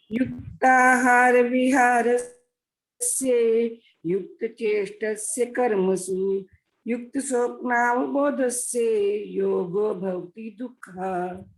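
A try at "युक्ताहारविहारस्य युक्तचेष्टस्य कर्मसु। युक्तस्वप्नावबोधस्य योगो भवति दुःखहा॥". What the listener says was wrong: बिल्कुल ठीक बोला।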